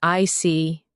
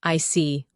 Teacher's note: When you show understanding with I see, your tone drops slightly to show calmness